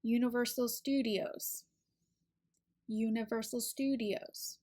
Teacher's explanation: careful where we place our stress in a phrase Universal Studios usually the stew part is where we place the most emphasis or stress so it's a little bit longer a little bit louder than the rest of the syllables in the phrase